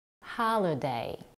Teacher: here we have the primary stress on the first syllable · first syllable ha the second syllable L is UN stressed and the last syllable day has a secondary stress